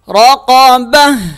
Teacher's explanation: را زبر را، قاف زبر قا رقا، با زبر با رقب، تا دو زیر تین رقبت رقبت، وقف رقبہ. جب وقف کریں گے تو یہ تا جو ہے وہ ہا میں کنورٹ ہو جائے گا